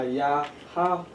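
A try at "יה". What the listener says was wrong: That's not a ha, that's a ya. Ya. Yahai.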